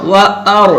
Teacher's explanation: जब वाव को हम अदा करेंगे तो दोनों होठों को गोल भी रखना है, और वाव पर जबर होने की वजह से वाव को खींचने नहीं देना